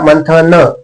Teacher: आतून जीभ आपली दाताला लागते